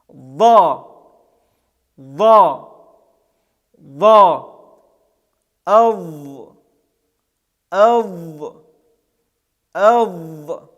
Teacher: Это звук звонкий, с участием голосовых связок произносится. Этот звук также является эмфатическим, то есть произносится с напряжением органов речи и подъемом задней части спинки языка. Это твердый звук, произносится через А, и также мы не вытягиваем вперед губы.